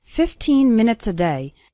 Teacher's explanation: the last two syllables of minutes become very small and just serve to connect with the word day